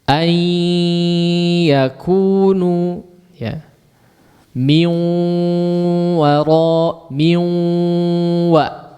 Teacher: proses masuknya nun sukun kepada huruf berikutnya itu disertai dengan gunnah yang dipanjangkan ya. Inilah sebab penamaan idgham ini ya disebut dengan idgham bi gunnah karena hurufnya melebur kepada huruf berikutnya atau nun sukun atau tanwinnya melebur kepada huruf berikutnya.